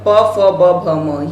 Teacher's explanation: ओष्ठ्य की बात करते हैं यहाँ पर प फ ब भ म, ये आपका ओष्ठ्य हुआ है